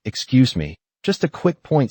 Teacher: For example, saying, excuse me, just a quick point signals that you'll be brief, so the speaker is more willing to yield. The rising intonation, on point, also shows confidence.